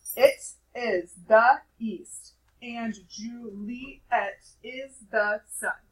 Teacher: notice how every other syllable is emphasized when you say it out loud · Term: stressed unstressed